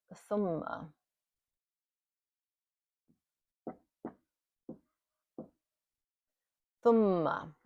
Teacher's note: It has a nasal sound and we hold it for two beats or two counts.